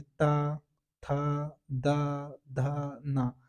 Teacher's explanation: जो हमारे जीव है ना वो दांत से लगती है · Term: दंत व्यंजन